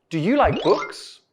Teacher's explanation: these types of questions usually have a yes or no answer so our intonation needs to rise